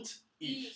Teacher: The glottal needs to be before ich.